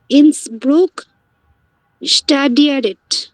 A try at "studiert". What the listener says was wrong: না, স্টাডিয়ারেট না, স্টুডিয়ার্ট।